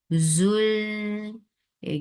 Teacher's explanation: Z, 2 counts long. Zul, give this whistle sound into it, and the whistle sound of za is like buzzing sound. Zul, for dhamma circle lips attached with lam, lam will get sifa of tawassut.